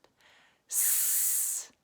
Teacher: Watch my mouth. Doesn't move. It's just the hissing through my teeth.